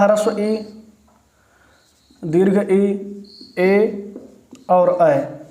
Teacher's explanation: जो अग्र स्वर होंगे उनका उच्चारण जिह्वा के अगले भाग से किया जाता है